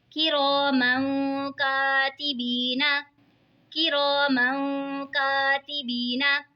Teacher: दो ज़ेर की तनवीन के बाद रूफ इक्फ़ा का काफ आ रहा है तो इक्फ़ा होगा, यानी गुन्ना करके पढ़ेंगे, और यहाँ पे देखिए जी या साकिन है, या साकिन से पहले ज़ेर है तो या मद्दा होगा, इसीलिए इसको खींच के पढ़ेंगे।